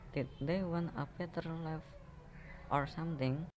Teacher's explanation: The second alternative can be or something. A raising intonation is required.